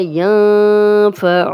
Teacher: نون ساکن کے بعد حرف حلقی نہیں ہے تو یہاں پہ ہم غنہ کر رہے ہیں، غنہ کریں گے، نون جزم والا اور آگے فا آ گیا، غنہ کریں گے۔